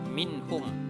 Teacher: Ketika kita baca minhum, min di sini tidak berdengung, artinya tidak panjang, dibaca secara jelas dan terang. Minhum dibaca jelas, minhum. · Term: idhar